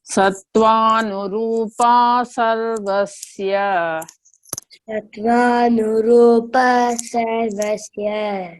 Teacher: See there, sarvasya, the A is not elongated. There is no bar on top of sarvasya, S-Y-A.